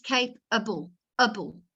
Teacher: so we get an uh sound instead of the a